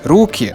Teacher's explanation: the plural, hands, руки, stress on the first syllable again